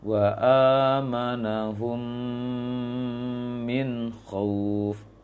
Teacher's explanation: Minnya tidak dengung, tapi amanahumnya dengung.